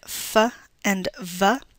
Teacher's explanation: f and v, where the lower lip is touching our upper teeth